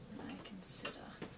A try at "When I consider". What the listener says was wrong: No, actually, you gave it a downward inflection. When I consider...